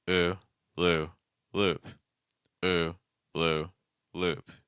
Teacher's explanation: my lips are staying pretty straight for all of those cycles